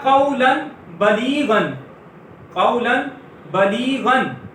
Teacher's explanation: تو ہم تنوین کو میم سے بدل دیں گے, تو یہ قولن سے ہو جائے گا قولم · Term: اقلاب